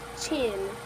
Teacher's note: first the airflow is stopped and then it's suddenly released